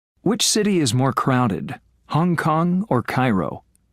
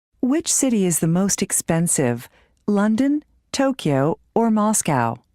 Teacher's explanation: notice how the intonation in questions of choice drops then Rises and then drops